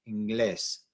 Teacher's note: the stress is on that glés, on the last syllable, but it ends with an S.